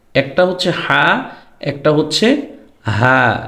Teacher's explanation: একটা হচ্ছে হলকের শুরু থেকে আরেকটা হচ্ছে হলকের মাঝখান থেকে দুইটা দুই জায়গা থেকে উচ্চারণ হচ্ছে